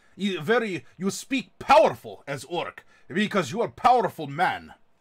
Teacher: slightly rolling R's, but you constrict the back of your throat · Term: Russian accent